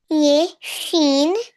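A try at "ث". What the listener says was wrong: शीन नहीं। शीन के तीन तीन तीत होते हैं, ठीक है, इसका एक ही तीत है। सा का एक तीत होता है, ठीक है।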